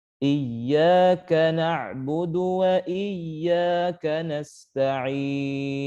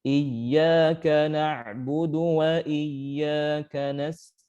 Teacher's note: huruf ya di sini bertasydid dibaca nabar atau ada sifat nabarnya, yaitu dihentakkan sedikit tanpa berlebihan